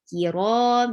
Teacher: Ki, kaf is light. Ra is heavy and two counts long.